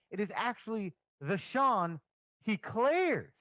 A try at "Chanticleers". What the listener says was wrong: No, the Clears. Not Claire's. Clears. Yeah, you sounded like you said Eau Claire.